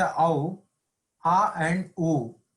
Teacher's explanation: A is Kantha, u is Ostya. That's why that is Kantoshtam.